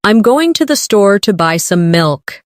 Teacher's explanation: Notice how certain words are stressed. Going, store, buy, milk.